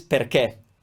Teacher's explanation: Perché, closed E sound at the end.